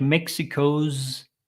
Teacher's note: zed sound here challenges like Mexico's again another Zed sound so these are s letters but with a z sound